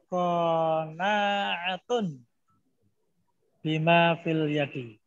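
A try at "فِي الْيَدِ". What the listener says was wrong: Alnya tidak al yadi, fil yadi, jadi tidak al Iya, lamnya yang ditasdik, yang disukun. Ya, lam yang disukun ya. Lamnya yang disukun, Pak. Fil yadi.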